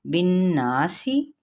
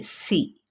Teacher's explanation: سین کی سیٹی کو واضح کریں گے اور باریک پڑھیں گے